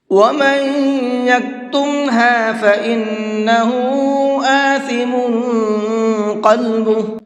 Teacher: وَمَن یہاں پر بھی غنہ کریں گے، فَإِنَّ اس نون کے اندر بھی غنہ کریں گے